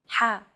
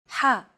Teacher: throat ha this sound is pronounced very deep in the throat you want to make an H sound but with the throat constricted a little ha one trick to produce this sound is to push your